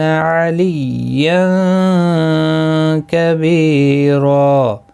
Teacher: تنوین کے بعد حروف اخفا کا کاف ہے، اخفا حقیقی ہوگا، گنہ کے ساتھ پڑھیں گے